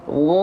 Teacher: huruf Gin ketika fathah enggak jadi jadi A tapi jadinya O karena pangkal lidahnya diangkat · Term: istila